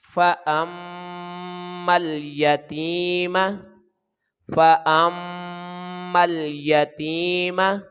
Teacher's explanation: اور یا کے اوپر زبر ہے، جلدی پڑھیں گے، تا کے نیچے زیر ہے، آگے یا ساکن ہے تو یہ یا مدہ لمبائی ایک الف کے برابر ہوگی، میم کے اوپر زبر ہے تو اس کو جلدی ادا کریں گے.